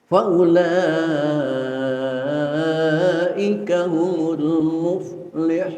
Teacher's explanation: waw di dalam kalimat ulaika itu bukan waw mad. Oleh karena itu tidak boleh dibaca panjang.